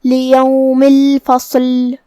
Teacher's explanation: صاد حروف تفخیم میں سے بھی ہے تو ہمیں اسے بھاری آواز میں پڑھنا ہے · مد جائز منفصل کا معنی ہے کہ حرف المد پہلے کلمہ کے آخری میں ہو اور اس کی وجہ جو کہ حمزہ ہے وہ دوسرے کلمہ کی شروعات میں آئے. مد جائز منفصل میں ہم اپنی آواز 2 سے 4 مد کے برابر لمبی کریں گے